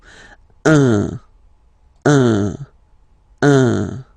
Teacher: So it's what we call the nasal, so it goes in your nose, okay? Un. So if you listen to me, you don't hear any N, okay?